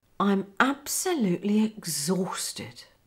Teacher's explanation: Can you hear the intonation? I'm absolutely exhausted. Comes down at the end.